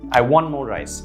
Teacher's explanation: the t sound is dropped off